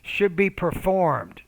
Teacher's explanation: when you use the verb perform, you want to put stress on that second syllable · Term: Word stress